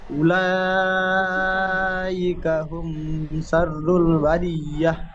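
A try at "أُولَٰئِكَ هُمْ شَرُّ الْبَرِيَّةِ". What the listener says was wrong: উলাইকা হুম মিম সাকিনে আবার গুন্না হয়ে গেল মিমে গুন্না হবে না একটু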